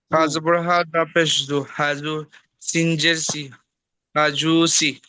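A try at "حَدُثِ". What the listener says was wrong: হ্যাঁ, হাজু, এই যে একটু টান হলো, টানটুকু হবে না শুধু, বাকি ঠিক আছে। হাজুসি, হাজুসি।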